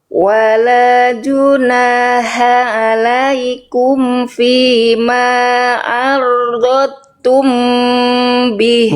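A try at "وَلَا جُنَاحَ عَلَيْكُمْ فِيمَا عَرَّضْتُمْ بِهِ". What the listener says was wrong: Bukan ardot tuh Bunda. Arod. Nggak ada dot. Dotnya cuma satu. Arod.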